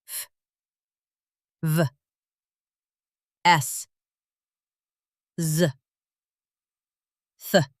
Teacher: Fricative sounds. Air continues to flow.